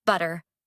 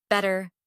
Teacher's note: Let the tongue tap once and move on.